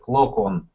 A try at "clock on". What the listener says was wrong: Careful of the pronunciation, because it's not O, but it's A. Clock.